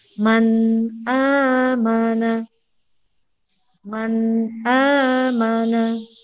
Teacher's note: Tidak dengung, tidak pula langsung. Jadi huruf nunnya tetap terbaca. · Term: izhar khalqi